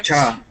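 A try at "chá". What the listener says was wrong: Yeah, more of a cha instead of like a quick ch sound.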